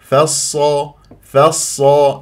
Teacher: الصاد الساكنه والصاد فيها صفير وجريان للصوت والنفس